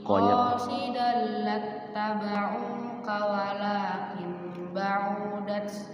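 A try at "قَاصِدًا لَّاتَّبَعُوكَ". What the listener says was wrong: Ainnya pendek. Qasidallat tabauka.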